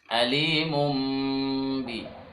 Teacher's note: Maka cara bacanya tanwin itu dirubah ke mim karena bertemu ba. Yang asalnya alimun n ya, maka berubah jadi m. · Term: Iklab